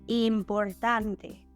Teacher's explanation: the stressed syllable is in the second to last position.